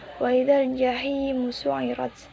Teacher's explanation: hukum bacaan mad tabi'i karena ya sukun didahului kasroh, dibaca panjang selama satu alif atau dua harokat.